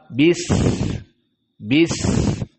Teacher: Kita sukunkan sin, bis masih ada desis, bis tidak bisa kita tahan